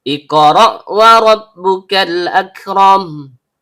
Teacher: Karena qafnya sukun dan berada di tengah kata, maka hukum bacaannya qalqalah sugro, bunyi pantulannya kecil. · Ro, ujung lidah bertemu dengan langit-langit bagian belakang. Karena ro-nya fathah, maka hukum bacaannya tebal atau tabkhim.